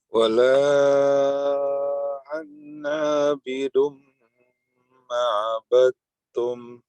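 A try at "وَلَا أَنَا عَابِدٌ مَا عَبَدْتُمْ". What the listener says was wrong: Berikan jeda dia 2 harokat. Ma'abattum. Baik, afwan, sebelumnya ana tadi masih terdengar mati dia, Pak ya. Wala ana'a. Ana, dia hidup satu harokat saja. Anda seperti dia tidak memiliki alif atau mat di sini, ya.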